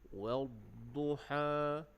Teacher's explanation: bila kita waqaf pada ha makhrajnya adalah di tengah kerongkong. Jadi kita pastikan bila sebut ha, dia jadi ha pedas. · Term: ha di tengah kerongkong